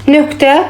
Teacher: Nöqtə özündən sonra kar samit gəlibdir. Bizə K səsi verib.